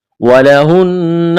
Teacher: نون مشدد ہے, آواز ناک میں چھپائیں گے. نون کو را کے ساتھ ملانا ہے, را کو موٹا کرنا ہے.